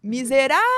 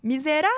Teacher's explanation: Repararam que eu me delonguei mais no rá? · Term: sílaba tônica